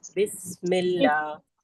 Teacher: सीन में सीटी जैसी आवाज आती है